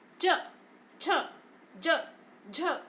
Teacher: तो इनके उच्चारण के समय जो वायु है वह तालु में टकराती है,